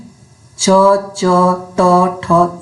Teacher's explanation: ये व्यंजन होते हैं जिनका उच्चारण करते समय स्वर तंत्रिका झंकृत नहीं होती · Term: अघोष